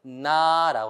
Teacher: 여러분이 나라고 하면 입도 벌리지만 코로도 바람이 나갑니다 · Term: 비강